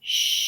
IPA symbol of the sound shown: ʃ